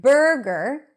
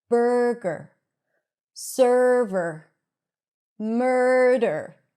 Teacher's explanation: we have the stir sound at the beginning, burr, and then we have a schwa r at the end, gur. So it's going to be shorter and softer and lower in pitch.